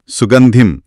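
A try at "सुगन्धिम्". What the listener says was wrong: ఇక్కడ ధిం. అవును, ధిం. మామూలు ధిం కాదు, కొంచెం గాలి రావాలి. ధా శబ్దం అది.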